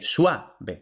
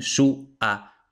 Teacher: Eso debería ser un diptongo pero realmente ningún nativo dice suave sino que los nativos dicen su a lo dicen como un hiato no entonces por eso conviene que marquemos la división silábica aquí